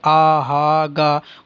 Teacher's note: जब हम कंठ से जिन वर्णों का उच्चारण होता है ओठ नहीं मिलते, आ हा गा, ओठ खुले रहते हैं